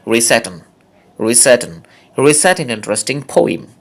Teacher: রিসাইটের সাথে অ্যান যুক্ত হয়ে শুধু ন অস্তিত্বটুকু থাকে। দেখুন রিসাইটের সাথে ন আমি একসাথে করে ফেললাম, রিসাইটন, রিসাইটন, রিসাইট অ্যান ইন্টারেস্টিং পোয়েম, রিসাইট অ্যান ইন্টারেস্টিং পোয়েম।